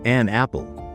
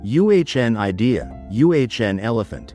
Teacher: And just like a and also has a soft unstressed pronunciation in everyday speech, it usually sounds like uhn